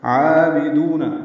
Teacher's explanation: عین اور دال کو 2 حرکات لمبا کرنا ہے